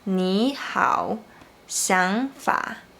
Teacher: Normally, we just pronounce the third tone with a low pitch and then go down a bit. But when the third tone is followed by another third tone, you should pronounce the first one like the second tone